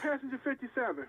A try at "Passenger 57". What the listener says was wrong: Passes a 67. Yeah, take some of them S's out your mouth. You said 67.